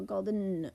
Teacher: I kind of tell my students it's almost a swallowed sound. We say it so fast we go golden. We barely hear a vowel at all.